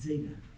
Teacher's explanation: That is not just a plain Z, it's like a DZ